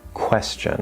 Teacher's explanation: We start with that K, and then we release into the W. This one is a stronger K because it's at the start of a stressed syllable